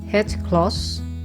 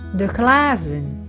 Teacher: A in het klas is a short A. But when they turn into plural form, the glazen is a long A.